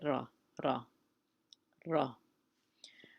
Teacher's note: this letter is originating from the front of the palate, right above the teeth, right above the back of the teeth.